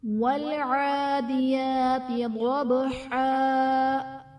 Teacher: ضبحا، ضاد حرف مستعلیہ پر پڑھا جائے گا، با حرف قلقلہ ساکن ہے تو یہاں پر قلقلہ خوب ظاہر ہوگا، اور وقف کی صورت میں دو زبر کی تنوین الف سے بدل دی جائے گی۔